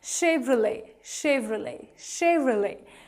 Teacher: Though it has T in the end, but it is silent